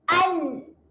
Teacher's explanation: kena sentuhkan hujung lidah, naikkan sahaja ke gusi atas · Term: huruf nun